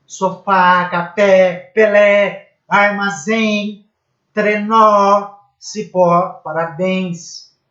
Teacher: Sílaba tônica na última. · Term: oxítona